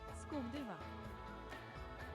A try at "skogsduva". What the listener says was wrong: No, there's an S missing in that.